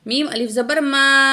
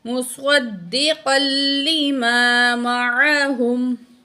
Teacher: الف مد ہے، 2 سیکنڈ کھینچ کے پڑھیں گے